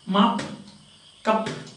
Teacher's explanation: in word final positions, stop or plosive is not released.